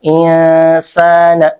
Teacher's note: Kalau di sini huruf selanjutnya adalah sin. Nah, ketika membaca ikhfa, si mulut kita sudah dipersiapkan untuk membaca huruf sin. Insana. Nah, kemudian sa di sini adalah mad tabi'i karena ada alif yang sebelumnya fathah.